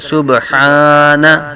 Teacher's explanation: با ساکن میں کلکلا کریں گے